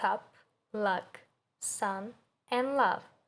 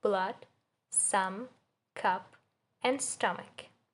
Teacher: It appears in words like cup, luck, sun, and love. It's a short center vowel. Your mouth is relaxed and open and the tongue is in the middle position. In phonetics, it's called a strut vowel because of the example word strut in the lexical set system or also in other words like blood, sum, cup, and stomach.